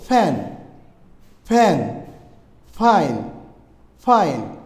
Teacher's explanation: উপরের দাত নিচের ঠোটের সাথে মিশে উচ্চারণ করতে হবে